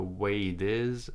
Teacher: So he's American, so he connects it. This T sounds like a D.